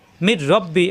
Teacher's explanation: র এবং লাম আসলে গুন্না করতে হবে না গুন্না ছাড়া মিলিয়ে পড়তে হবে তাজদিদ ধরে এখানে তাসদিদ দেওয়া না থাকলেও তাজদিদ ধরে মিলিয়ে পড়তে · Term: ঈদগামে বেলাগুন্না